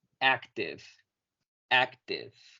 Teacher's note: sin olvidar pronunciar la V casi como una F